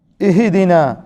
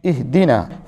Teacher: کلمہ اہدنا کے اندر بچوں عام طور پر بچوں سے غلطی ہوتی ہے اور بڑے بھی غلطی کرتے ہیں، اس لیے کہ وہ یہاں جھٹکا دے دیتے ہیں، اہدنا پڑھ لیتے ہیں، اہدنا یہ غلط ہے، یہاں پہ قلقلہ نہیں ہے، اہدنا حمزہ کو ہا سے ملائیں اور جھٹکا نہیں دیں، جھٹکا نہ ہونے پائے، اہدنا۔